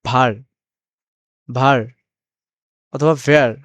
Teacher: ডাব্লিউটা হচ্ছে ভয়ের মতো উচ্চারণ করবে, নিচের ঠোঁট ও উপরের দাঁত মিলিয়ে